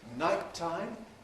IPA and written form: ˈnaɪttaɪm (nighttime)